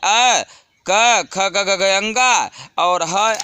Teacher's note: जिह्वा का स्पर्श पूर्ण रूप से कंठ से होता है, कंठ से स्पर्श होता है, वहीं वर्ण कंठ में आते हैं।